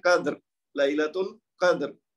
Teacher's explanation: تو قاف کے اوپر زبر ہے تو لہذا را موٹی پڑی جائے گی